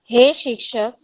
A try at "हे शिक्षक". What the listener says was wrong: हे शिक्षक नहीं, शिक्षक क आधा नास्ति, क पूर्ण। हे शिक्षक किन्तु विसर्गः नास्ति।